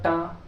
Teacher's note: ट का उच्चारित स्थान देखो मुर्धा क्योंकि ट में ऊपर जी मुड़ रही है जीवा मुड़ रही